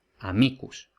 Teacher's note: Por tanto, si la penúltima tiene una raya por encima, tiene un macrón, la penúltima es larga y por tanto es acentuada